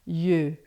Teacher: E yeux, que é um som mais fechado, você vai fazer uma boca de O e vai falar E, tá?